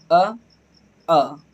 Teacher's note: छोटा आ और बड़ा आ का उच्चारण हमारे कंठ से हो रहा है। हमारी जीभ कुछ नहीं कर रहे, देखिए बोलेंगे अ।